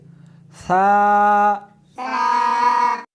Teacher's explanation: اس حرف کو زبان کو دونوں دانتوں کے درمیان رکھ کر پڑھیں گے